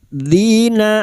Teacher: fathah diikuti alif dua harakat kita panjangkan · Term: mad thabi'i